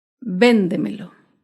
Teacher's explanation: Véndemelo se acentúa en la sílaba anterior a la antepenúltima sílaba. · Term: palabras sobreesdrújulas